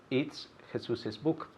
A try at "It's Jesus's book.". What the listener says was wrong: Perfect. It's Jesus's book. Again, the extra syllable.